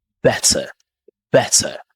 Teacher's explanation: British tend to say better with a hard T